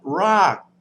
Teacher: It's a dead syllable as well. So low class initial consonant, dead syllable, long vowel, that gives us a falling tone